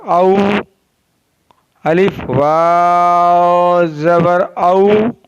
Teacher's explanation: वाव is pronounced by the rounding ऑफ both lips. · दोनों होठों की गोलाई से अदा होता है।